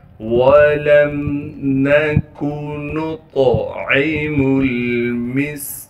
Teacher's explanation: وَلَمْ نَكُ نُطْعِمُ الْمِسْكِينَ، نون کو طا سے ملائیں گے کیونکہ طا ساکن ہے، طا کو موٹا کر کے پڑھیں گے اور طا میں قلقلہ کریں گے، عین کو صاف کر کے گلے سے نکالنا ہے، میم کو آگے لام ساکن سے ملا دیں گے، اس میم کو آگے سین سے ملانا ہے جو کہ ساکن ہے اور سین کی سیٹی ادا کریں گے، کاف کو باریک کر کے اور کاف کو آگے یا مدہ سے ملا دیں گے۔